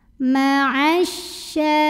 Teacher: alif lamnya ini tidak perlu dibaca ya. Idghamkan atau masukkan langsung ke syin. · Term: alif lam syamsiah